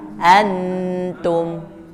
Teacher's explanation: Jadi pas bunyi di hidung, ujung lidah sudah ke ta. Sudah masuk ke ta. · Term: ikhfa